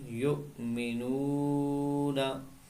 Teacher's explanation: हमजा साकिना झटके से साथ पढ़ें